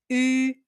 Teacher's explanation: You say e, you keep your tongue forward, and then you round your lips like if you want to say ooh, but you don't say it. So, the tongue is forward, the lips are rounded, and you say u.